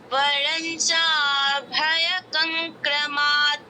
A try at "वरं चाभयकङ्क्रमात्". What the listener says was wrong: বরঞ্চা নয় ওয়ারঞ্চা, আর ভয়কং নয় ভয়্যকং, ভয়্যকং। ঠিক আছে, আরেকবার ওয়ারঞ্চা ভয়্যকং ক্রমাৎ।